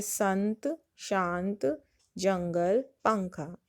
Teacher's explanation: इसमें अनुस्वार में हवा नाक से निकलती है बाहर